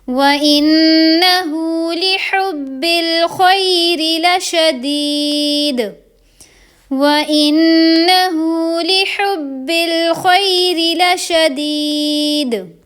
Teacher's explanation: تو دال جب ساکن ہوتا ہے نا تو اس پہ بھی حروف قلقلہ یعنی کہ آواز کو ہم پلٹا دیں گے